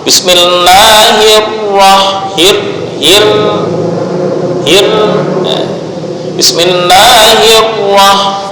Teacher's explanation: ujung lidah tetap bergetar satu kali saja secara ringan